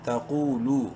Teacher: لام کو بھی ایک الف برابر لمبا کریں گے واو مدہ کی وجہ سے. تقولو الف سائلنٹ ہے.